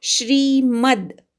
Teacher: तवर आघात घ्यायचा, दितीचा ती पटकन म्हणायचा, रस्व आहे. श्रीमद, मवर आघात घ्यायचा, अर्ध्या द पर्यंत जायचं